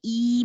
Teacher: Make sure you have an E, then your tongue has to go very high. E, my tongue is high and towards the front.